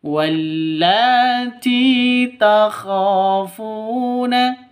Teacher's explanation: ti panjang dua ketukan karena ada ya mati diawali dengan kasroh, mad asli atau mad tabi'i